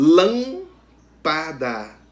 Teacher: antepenúltima sílaba é a sílaba tônica lan lâmpada a antepenúltima sílaba então essa palavra ela é proparoxítona